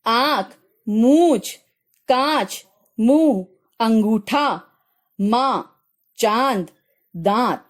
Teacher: अनुनासिक का चिन्ह चंद्र बिंदु होता है, जिसका उच्चारण गले और नाक से किया जाता है।